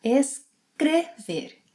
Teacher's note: In the infinitive, it has a closed E sound